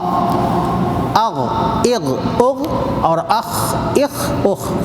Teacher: اسی طرح ہا، حی، حو، یہ بیچ حلق سے. اور آخری حلق سے غین خا